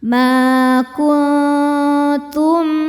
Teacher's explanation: Ma kuntum kun ada hukum ikhfa hakiki aqrab karena nun sukun bertemu ta. Cara bacanya nun disamarkan ke ta disertai bunyi dengung tapi dengungnya sedikit.